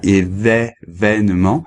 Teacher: on a un E ouvert, le deuxième, événement, et cependant on garde un accent fermé, un accent aigu, alors que bon, ça devrait être d'après le son un accent plutôt grave.